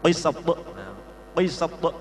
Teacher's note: Qofnya agak moncong dulu, sin meringis, ta agak moncong.